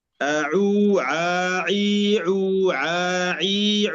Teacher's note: يعني أن ننتبه أن لا نأتي بالغنة في العين